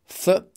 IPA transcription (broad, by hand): θ